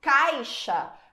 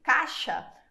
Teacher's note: caixa quase some o i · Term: ditongo decrescente